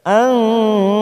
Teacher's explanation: nun sukun bertemu fa namanya ikfa ausat kita samarkan bunyi nun sukun